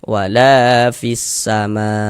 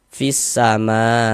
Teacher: Huruf sin termasuk salah satu huruf syamsiyah. Maka alif lam bertemu dengan huruf sin, hukumnya alif lam syamsiyah. Nah, dibaca idgham.